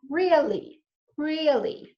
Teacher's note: I'm stretching it out and I'm using this low tone to indicate that I don't believe it